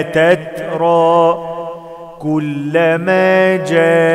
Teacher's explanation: مد واجب متصل أربع حركات